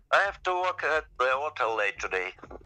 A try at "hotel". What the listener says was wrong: I was trying to figure out what sounds weird, but it's the pronunciation of hotel. So you stressed the first syllable. You said hotel. We stress the second syllable. Hotel. Hotel.